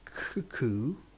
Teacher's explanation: my tongue is sort of rubbing up the top of the mouth there. A little bit, but not at the front. Not at the front. Right at the back.